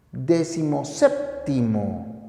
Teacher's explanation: términos esdrújulos cada término tiene su tilde pero al yuxta poner el primero pierde el acento y este recae solo en el segundo